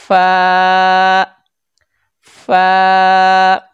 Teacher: उसके बाद अगला हर्फ है फ ऊपर के दांतों के किनारे ऊपर के दांतों के किनारे और निचले होठ के तर हिस्सा से हरफे को अदा करते हैं · اوپر کے دانتوں کے کنارے اور نچلے ہونٹ کے تر حصہ سے حرف فا کو ادا کرتے ہیں